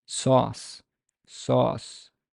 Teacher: the back part of the tongue is made tense with a slight raising toward the soft palate or the Vellum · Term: valorized